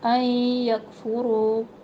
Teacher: نون ساکن کے بعد یا ہے، یہاں پر ہم ادغام کر رہے ہیں، ادغام علی غنہ